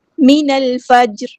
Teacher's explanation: جیم ساکن ہے تو یہاں پہ قلقلہ ہوگا